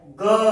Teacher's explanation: क कंठ से आ रहा है, ख कंठ से आ रहा है, ग कंठ से आ रहा है, घ कंठ से आ रहा है